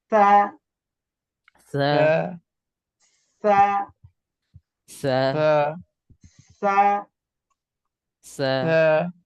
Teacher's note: ঠিক আছে, খুব স্বাভাবিকভাবে নরম আওয়াজে উচ্চারণ হবে। জিহ্বার আগা, দাঁতের আগা নরম আওয়াজ, কম কম টান